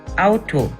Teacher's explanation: In the combination AU, the sound of the U tends to be shortened.